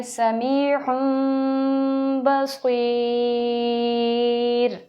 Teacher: اگر را ساکن ہو اور اس سے پہلے یا ساکن آ جائے، یا ساکن آ جائے تو ایسی را کو باریک پڑھا جاتا ہے